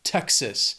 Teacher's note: 2 syllables, stress is on that first syllable, Texas.